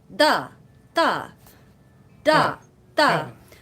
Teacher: for Italian, we want to dentalize the D's and T's, which means taking your tongue and touching your teeth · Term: dentalizing